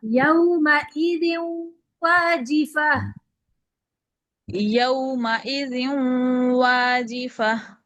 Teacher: ناک میں آواز نہیں جانی چاہیے